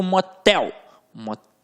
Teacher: Quando eu digo motel, motel, tel ficou com a sílaba mais forte, que é a última, portanto uma oxítona